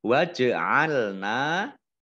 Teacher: Nun fathah alif mat tobi'i panjang 2 harokat. Waj'alna jimnya dibaca qalqalah ya, jim sukun, bacaan qalqalah dibaca memantul